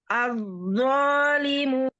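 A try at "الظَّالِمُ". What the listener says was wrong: Limu. Limu. Munya doma monyong. Selesaikan harokat domanya. Az-zalimu.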